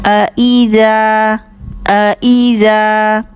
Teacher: ذال کو نرمی سے پڑھیں گے، بزنگ ساؤنڈ نہیں آنے دیں گے